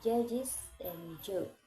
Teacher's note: J is voiced post-alveolar affricate as in judges and Joe. Voicing J is voiceless and J is voiced.